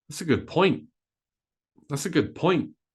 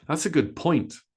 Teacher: it's a good point that's a good point we stress point we stress good a little bit but we stress point much more that's a good point notice how fast I say that's uh